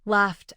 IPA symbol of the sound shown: t